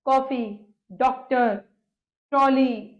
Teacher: इसका उच्चारण आ ओ के बीच का है